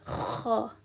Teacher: And with the kha, there's no English equivalent. It comes from the top of your throat, and it kind of makes a scratching sound.